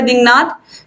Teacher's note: अनुनासिक में जब हम बोलेंगे तो इसमें नाक से स्वर निकलता है, नाक से